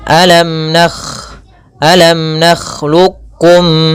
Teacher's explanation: Huruf kha itu tidak nakh, tapi dia mengalir suaranya. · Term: kha halus